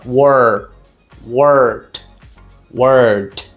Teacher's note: O R sempre vai ter esse som, não vai? De língua enrolada.